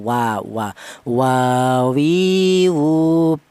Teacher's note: Jadi ini huruf wau dihasilkan dari kedua bibir yang renggang.